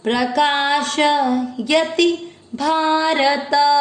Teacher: यति मात्रा छोटी है, लंबा नहीं खींचना है।